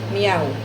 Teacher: Tres vocales juntas en una misma sílaba. Usualmente, cerrada, abierta, cerrada.